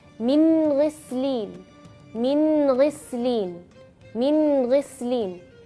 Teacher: huruf ghain yaitu di bagian paling atas tenggorokan